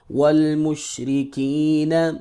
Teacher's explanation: واو زبر لام وال، میم پیشین مش، والمش، را زیر ری، والمشری، کاف زیر یا کی، والمشرکی، نون زبرنا، والمشرکین، یا ساکن ہے، پہلے زیر ہے لہذا مدہ کریں گے